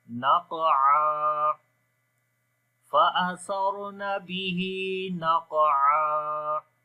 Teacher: بھی کریں گے جو کہ کمزور قلقلہ ہے، اگین نق، اور عین کو گلے کے درمیان والے حصے سے پڑھیں گے اور جب رکیں گے تو ایک زبر پڑھی جائے گی، تو